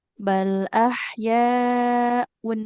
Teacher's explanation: bunyi nun sukun pada tanwinnya dia dijelaskan. Un, nggak samar-samar.